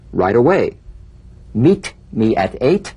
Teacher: the final T when it's followed by a word beginning with a vowel again it becomes in effect immediately there's a vowel on both sides of it so it could soften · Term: the medial T